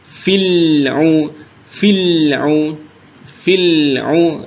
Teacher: sudah betul lamnya tapi sifatnya hilang karena lamnya kok jadi memantul lam itu tidak tertahan dan tidak mengalir dia di antara di antara tertahan dan mengalir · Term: tawasud bainiah